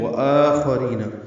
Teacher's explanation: ہم یہیں سے شروع کر رہے ہیں تو وآخرین، واو ہونٹوں کی نہ تمام گلائی سے ادا کریں گے، مد بدل ہے 2 حرکات لمبا کریں گے، خا پر پڑھیں گے اور جلدی ادا کریں گے، ری را باریک ہے، یا مدہ ہے 2 حرکات لمبا کریں گے.